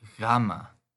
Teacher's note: a g sound but it's more of a gargling sound than the English G